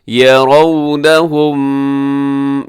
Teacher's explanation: یہاں میم ساکن کے بعد میم ہے تو یہاں پہ بھی ادغام ہوگا، لیکن ادغام شفوی